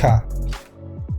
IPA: xa